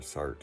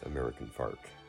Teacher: A stereotypical characteristic of the Utah dialect is pronouncing O as ah when it appears before a r sound. So older speakers may say harse instead of horse, or sart instead of sort.